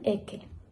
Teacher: También tenemos la aspiración de la S implosiva.